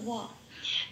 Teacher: ও plus অ, মানে ওয়া, ঠোঁট খুলে বলতে হয় ওয়া